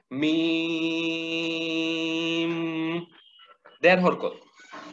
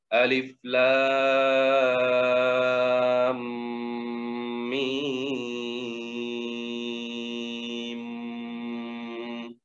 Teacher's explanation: তাহলে লাস্টের মিমটার উচ্চারণটা এভাবে হবে মিম, দেড় হরকত পরিমাণ এই গুন্নাটা হবে, শেষের গুন্নাটা